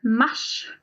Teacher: So there we make the R join the S, and it becomes a sh sound